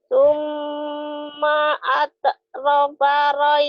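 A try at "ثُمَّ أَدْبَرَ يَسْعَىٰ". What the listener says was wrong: Terbalik. Adbaro bukan adroba. Adbaro. Adnya gini. Summa adbaro yas'a.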